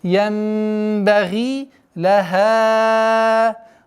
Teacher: Удлинение в размере двух огласовок кесры.